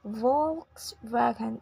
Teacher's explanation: It is Volkswagen in both accents with a stress on the first syllable.